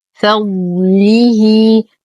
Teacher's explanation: نتم كسرة اللام والها ونصلها بياء مادية بمقدار حركتين صلة صغرى